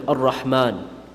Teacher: Ar-Rahman, you're supposed to pronounce it full mouth.